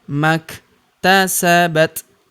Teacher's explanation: huruf kaf berharakat sukun kita berikan hembusan tipis